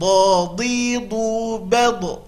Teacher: Huruf do makhrajnya adalah tepi lidah ke gigi geraham atas.